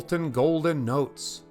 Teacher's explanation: that's a repetition of the long o sound